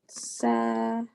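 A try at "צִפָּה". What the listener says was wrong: No, tzi, it's E, tzi.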